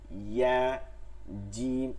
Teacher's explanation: তাহলে জিম আর ইয়াতে বাতাস বন্ধ হবে